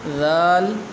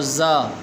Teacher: ذال یہ زبان لگتی ہے دانتوں کے درمیان میں، اور زا ذرا زور لگتا ہے اس پر، اور ذال نرمی کے ساتھ ادا ہوتی ہے